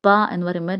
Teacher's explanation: ഓഷ്ട്യം എന്ന് പറഞ്ഞാൽ നമ്മൾ പ എന്ന് പറയുമ്പോൾ 2 ചുണ്ടും കൂട്ടിമുട്ടുന്നുണ്ട്